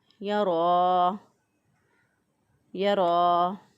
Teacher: را کے اوپر چونکہ کھڑی زبر ہے اس لیے را کو پر پڑھیں گے، موٹا پڑھیں گے۔ را کے اوپر کھڑی زبر یا الٹا پیش ہو تو را کو پر پڑھیں گے، اور را کے نیچے زیر جو ہے وہ ہو تو کھڑی زیر ہو تو را کو باریک پڑھیں گے۔